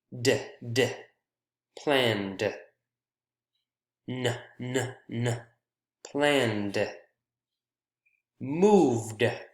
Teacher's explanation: the word ends in a voiced vowel or consonant sound, then we add a D